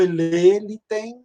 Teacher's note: A gente está lendo o E fechado, que é a pronúncia erasmiana, mas elé também não está errado.